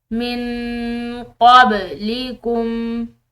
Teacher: نون ساکن ہے، اس کے بعد قاف حروف اخفاء میں سے ہے تو اس کی وجہ سے اس نون ساکن پر ہم اخفاء کریں گے